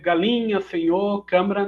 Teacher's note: a vogal pretônica seguida de sílaba iniciada por consoante nasal pode assimilar absorvendo a nasalidade do fonema vizinho